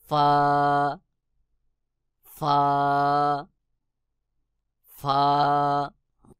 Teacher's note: ফা নিচের ঠোঁটের পেট সামনের উপরের দুই দাঁতের আগার সঙ্গে লাগাইয়া নিচের ঠোঁটের পেট সামনের উপরের দুই দাঁতের আগার সঙ্গে লাগাইয়া ফা উচ্চারণ হবে